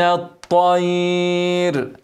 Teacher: افخم الطاء ورقق الياء والراء لوفت عليها هتبقى مرققه ولو وصلتها مرققه برض عشان مكسوره